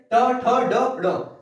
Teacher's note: ट ठ ड ड मतलब कि जीभ मुड़ रही है, मतलब मूर्धा।